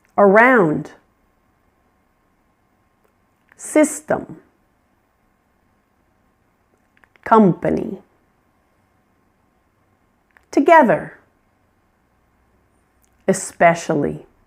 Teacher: Notice how the vowel is pronounced in these weak syllables. It's quiet. It's unclear. That's the schwa.